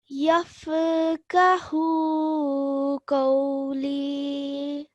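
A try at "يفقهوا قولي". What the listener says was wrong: So here where you did yafa, there's no need to do the jerking sound with fa. Only the jerking sound is for a few letters that are qalqala.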